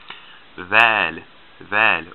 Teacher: it's voiced. Your vocal cords are vibrating when you make the sound. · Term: soft TH